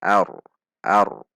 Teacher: Ra sukun sebelumnya fathah maka dibaca tebal ar dengan menegangkan pangkal lidah saat membaca ra, tidak dibaca ar.